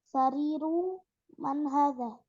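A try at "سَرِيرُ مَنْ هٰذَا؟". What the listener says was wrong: Nah, sahih, mumtaz, Masya Allah. Betul ya.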